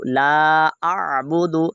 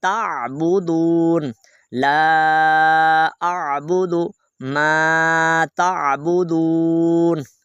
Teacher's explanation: حمزہ نہیں پڑھنا بلکہ عین کو ادا کرنا ہے